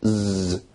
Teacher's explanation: z produces a vibration so it's a voiced sound